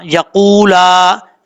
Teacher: یا زبر یا, قاف و بشقو, لام کھڑا زبر لا, یقولا, لام کے آگے الف بھی ہے, مد بھی ہے, مد منفصل, اس کو اڑھائی الف کے برابر لمبا کر کے پڑھیں گے.